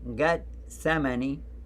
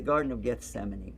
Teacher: garden of gethsemane and now that would be gut semeni because the th and the t sound are reversed between hebrew and arabic